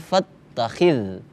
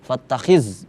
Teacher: huruf zal, pengucapannya jangan sampai jadi ketebalan. Fattakhiz, jangan, itu huruf za, tipis, za, fattakhidhu, hanya ha tebal, bukan ha.